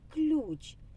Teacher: в слові ключ літера ю стоїть після приголосного і позначає один звук у і пом'якшує звук